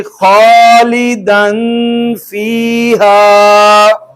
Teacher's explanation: تنوین کے بعد فا تھا, اخفا ہو گیا, اور یا ساکن تھی اس سے قبل زیر آ گئی.